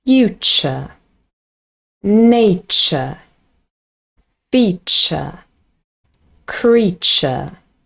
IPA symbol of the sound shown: tʃ